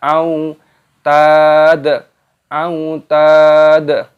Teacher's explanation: Wa fir'auna dzil lam alifnya dimatikan dibaca dzil au wawu sukun dibaca au tad au tad taknya dipanjangkan ada tanda alifnya mad tabi'i 2 ketukan dan di sini huruf dalnya dimatikan dan diqalqalah dipantulkan